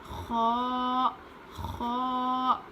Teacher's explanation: اس میں تھوڑی سی کھردری آواز ہونی چاہیے ہلکی سی زیادہ نہیں